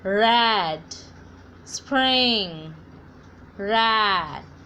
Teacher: जब आप R की साउंड निकालते हो तो ये जो टंग है आपकी ये ऊपर की तरफ मुड़ जाएगी.